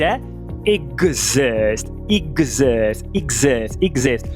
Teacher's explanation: No caso da palavra existir, o som do X é de GZ. Então a pronúncia de existir é exist.